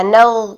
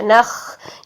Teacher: غین میں جہر ہے جبکہ خا میں ہمس ہے